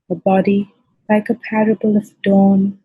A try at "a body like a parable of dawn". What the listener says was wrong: very good you read quite well